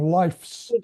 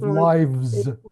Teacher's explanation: You're saying it as an F. You're saying life's instead of lives.